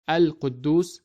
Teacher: we read it as Al-Quddus with clearly pronouncing the letter lam of al